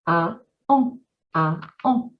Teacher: the difference between a plain vowel and then a nasal vowel. We create them by raising and lifting that velum.